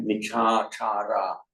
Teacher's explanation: Now, because it's alien to our native phonetics of English to have three long syllables like that, michachara.